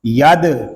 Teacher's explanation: کریں گے، اس کو ید اس طرح نہیں پڑھیں گے بلکہ دال ساکن میں کلکلہ خوب ظاہر کریں گے